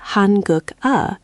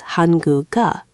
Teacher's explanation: The g at the end of guk slides over to the empty eo of eo. So, instead of hangugeo with three separate chunks, it becomes hanguga. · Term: liaison